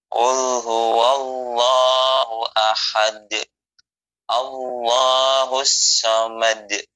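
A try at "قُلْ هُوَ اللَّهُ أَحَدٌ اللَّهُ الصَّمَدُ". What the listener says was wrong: Ya, tadi pertama Umi dengar kayak Allah, dengar seperti itu kayak Allah, jangan au ya, jangan ke bibir ya. Allah. Jadi menggunakan lidah naik ke atas, pangkal lidahnya naik karena tebal tafkhim.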